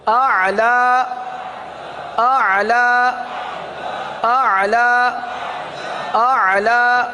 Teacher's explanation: حلق میں لے جائیں عین کو، وسط حلق سے ادا ہوتا ہے نا